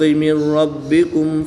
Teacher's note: نون ساکن کے بعد را حروف یرملون میں سے ہے، تو یہاں پر ادغام بلا غنہ ہوگا، یعنی کہ بغیر غنہ کے ادغام کریں گے